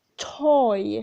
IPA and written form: tɔɪ (toy)